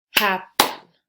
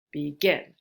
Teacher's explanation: the stress falls so begin and then happen is captain happen so the stress is on the first syllable